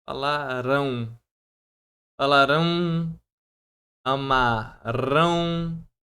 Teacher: Ele tá decrescendo de forma nasal, porque o o M ele vai trazer essa parte, Hum.